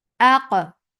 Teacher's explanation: Qaf will get sifa of qalqala, and qalqala is taba'ud.